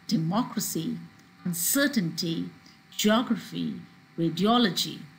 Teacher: here you have the stress third from the last syllable